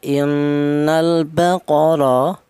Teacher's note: Ini dibaca tafhim. Ya, ro dibaca tafhim alasannya ro berharakat fathah